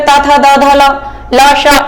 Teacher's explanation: लेकिन दंत में जैसे ही बोलेंगे हम तो दंत में जीभ जाके टकराती है।